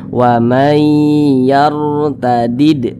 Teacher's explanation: Ada huruf ro sukun, sebelumnya ada huruf yang memiliki tanda baca fathah, maka huruf ro sukunnya ini dibaca tebal, dibaca tabkhim, sehingga pangkal lisan kita atau pangkal lidah kita itu naik terangkat ke atas ketika mengucapkannya. Huruf ro-nya itu ditebalkan.